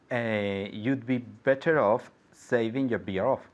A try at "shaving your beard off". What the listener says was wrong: Shaving your, not saving, shaving. So saving is ahorrando, ¿eh?